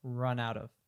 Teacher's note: So you can hear that the out of, that both of those are function words. They go together, and run is really the only thing that's emphasized there.